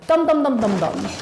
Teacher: when we actually pronounce de and them, we normally say dom for both words